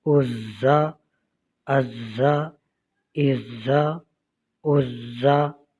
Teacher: یہ زا ہے، اس کو سختی کے ساتھ پڑھیں گے، سیٹی کی آواز اس میں آتی ہے۔